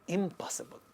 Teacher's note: the negative prefix in this word impossible sounds ma because it precedes another labial sound, pa. So it becomes ma, and then we get impossible.